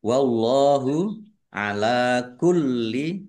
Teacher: Allahnya dibaca tebal karena harokat di depannya fathah. Lam fathah berdiri, mat tobi'i.